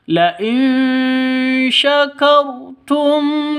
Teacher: kar rnya jangan lupa tebal ya Jangan dibaca tipis